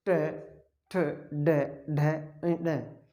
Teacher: जो ट वर्ग है, ट जैसे ट, ठ, ड, ढ, ड, ये सब के सारे मूर्धा से होते हैं। तो री और ट वर्ग है मूर्धा से उच्चारित होते हैं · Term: मूर्धन्य